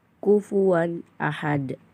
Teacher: huruf wawu dengan harakat fathah tanwin tidak boleh dibaca dengung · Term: izhar halqi